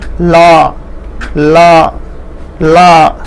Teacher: जिब्रोको दुवै छेउबाट सास बाहिर निस्किँदा उच्चारण हुने वर्णलाई पार्श्विक वर्ण भनिन्छ। अर्थात जीभ के दोनों ओर के जो किनारे से श्वास बाहर निकलती है